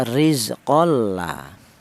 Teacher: Ini namanya idgham bila guna, idgham yang tanpa ada dengung.